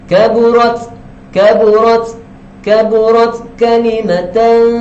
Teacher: Di sini kita disebabkan dia adalah huruf ta, dan ta ini adalah huruf mahmus yang keluar angin, maka kita kena keluarkan angin sedikit.